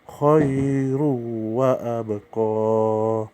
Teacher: Tanwin ketemu waw, langsung masuk ke waw